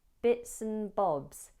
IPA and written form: bɪtsən bɒbz (bits and bobs)